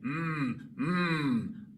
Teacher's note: Al pronunciar estos sonidos, utilizamos las cuerdas vocales. Vibran las cuerdas vocales. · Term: sonido sonoro